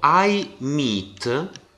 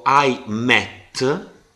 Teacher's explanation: vedete che la e al suono breve perché lo pronuncio in un tempo molto inferiore